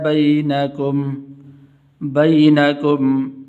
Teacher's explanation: یا حروف لین میں سے تو اس کو لمبا نہیں کریں گے،